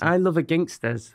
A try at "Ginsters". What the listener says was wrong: You're putting an extra G in it. Isn't it ginsters? Or are you saying gingsters? No, it's ginsters. No, it's just one G.